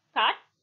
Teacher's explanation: The lips are neutral. Thus, the received pronunciation A is thus a central unrounded vowel between open and half open